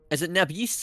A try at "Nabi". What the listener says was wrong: It's Nabi. S is silent. It's Nabi.